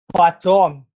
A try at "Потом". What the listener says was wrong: Потом. Хорошо.